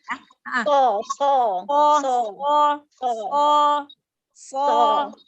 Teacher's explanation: huruf so itu huruf isti'la ditebalkan lagi ya